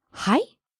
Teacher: This is the word はい said with rising intonation.